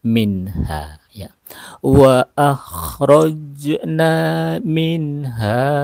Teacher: nun mati bertemu dengan huruf ha jadi cara bacanya nunnya dibaca jelas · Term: hukum izhar